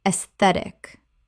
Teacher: Three syllables. The a e makes an e sound and the stress falls on the second syllable.